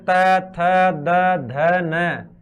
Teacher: जीव अपनी दांतों को है जो स्पर्श कर रही है तो इन्हें अपन बोलते हैं दंती वर्ण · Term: दंत्य वर्ण